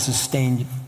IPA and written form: səˈsteɪn (SUSTAIN)